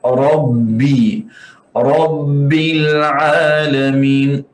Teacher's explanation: Jangan tekan huruf ba sampai seperti huruf pi.